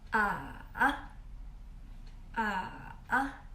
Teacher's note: The third tone, we pronounce it as fall down and raise up.